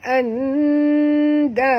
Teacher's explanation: Nun mati bertemu dal, kita kena sorokkan bunyi nun ke dalam dal disertai dengan dengung. Ini ikhfa hakiki.